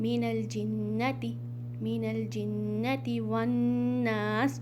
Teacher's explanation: ता मकसूरा है, तो इसको हमने स्ट्रेच बिल्कुल नहीं करना है, क्विकली पढ़ना है।